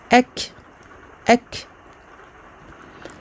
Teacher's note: Donc ici, après avoir fait la liaison, j'insiste, je n'oublie pas la hamza maftuha, donc qui porte une fatha, puis le kaf sakin pour lequel il faut absolument faire sortir le petit souffle, al-hams.